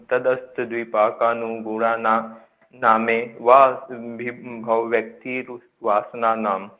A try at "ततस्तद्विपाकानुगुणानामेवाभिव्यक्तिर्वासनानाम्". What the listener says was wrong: ततः अस्त मत बोलिए, इसको बोलिए ततस। ततस बोलो, ततस। तद्विपाका नुगुणानाम एव नुगुणानामेव नुगुणानामेव मेव एवा नहीं बोलना, मैं गुणानामेव मेवा बोलना फिर आपने। हाँ भिव्यक्तिर वासना नाम। अब इसको पूरा बोलिए, ततस तद्विपाकानुगुणानामेव भिव्यक्तिर वासना नाम।